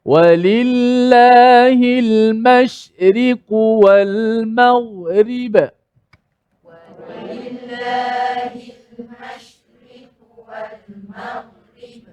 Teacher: Nipisnya ri. Tak boleh kita sebut secara tebal. Ri ataupun melampau nipisnya sampai ri begitu pun tak boleh.